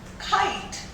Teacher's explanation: उसमें ह का पुट आ रहा है, इसलिए उसको एस्पिरेटेड साउंड कहते हैं